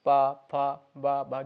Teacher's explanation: ओष्ठ जो हमारे बंद होते हैं आपस में चिपकते हैं